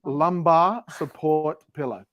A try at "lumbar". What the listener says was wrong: You're going to get the R in there finally. Lumbar. You usually go lumbar. Lumbar.